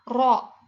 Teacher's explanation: ujung lidah yang bergetar mutawasit itu pertengahan majhur. Adanya getaran ro dan merokok tipis.